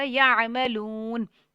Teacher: لو کو لمبا کریں گے، حروف مدہ ہے، جزم والی واو سے پہلے پیش ہے، ایک الف تک لمبا ہوگا. یہاں پہ نون جو ہے وہ ساکن ہو جائے گا.